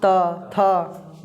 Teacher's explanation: इस त वर्ग का उच्चारण जो होता है दांत से · त दांत में आ रहा है उच्चारण कर पढ़ कर देखो त थ जीव सट रहा है